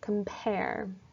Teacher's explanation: The first syllable is softer and shorter, hence it is unstressed, whereas the second syllable is louder and longer, so I need to designate it as stressed. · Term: iamb